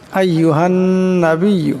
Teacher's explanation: এখানে নুন মুশাদ্দদ তাই এটাকে এক আলিফ পরিমাণ গুণনা করবেন